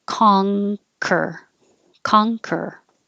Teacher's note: would make in the front of your mouth but it's not it's a an ng kong so the back of your tongue goes up high like for ring